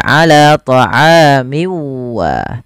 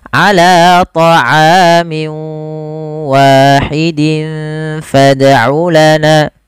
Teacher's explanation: masukkan tanwinnya ke huruf waw, kemudian dirubah suaranya menjadi huruf waw. Awalnya ala ta'amin wahid menjadi ala ta'amin wa. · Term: idgham bi gunnah